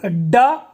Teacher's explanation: ड बोलने पर जो जीवा नोक है जहां पर स्पर्श करती है वो मूर्धा है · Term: मूर्धन्य